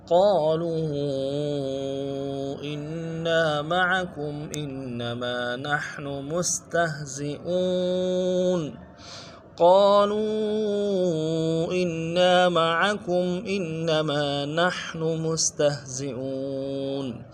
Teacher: قالوا میں قاف کو موٹا کرنا ہے، الف مدہ کھینچنا ہے، اور لو میں مدہ عارضی ہے، الف مدار میں کھینچنا ہے۔